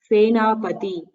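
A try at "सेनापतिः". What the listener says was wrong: Yes, you should not miss the visarga. You should always pronounce the visarga. Very good.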